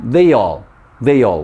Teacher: link these two words together they become they all they all we link the Y sound in they to the a sound in all · We link the ya sound in they to the a sound in all, or ah sound. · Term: linking